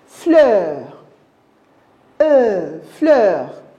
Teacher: J'ai allongé, j'ai ouvert ma bouche pour avaler le R qui est derrière. Nous allons le dévorer comme un loup. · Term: E ouvert